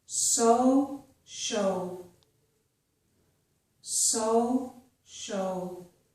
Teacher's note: you may have seen my lips rounded, but that was because of the vowel sound O. It was not because of the S, okay? So my lips will not be rounded in the same way for these other words.